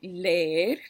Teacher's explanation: leer son las mismas vocales, pero van juntas y son fuertes. Entonces, leer son dos sílabas.